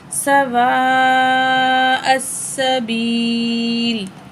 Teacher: وقف کریں گے، لام کی زیر ڈراپ ہو جائے گی، لام ساکن پڑھی جائے گی